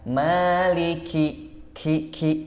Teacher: Maliki, ki, jangan lupa hamas ya. Maliki sifatnya adalah hamas atau bahasanya itu mengeluarkan desis angin ya.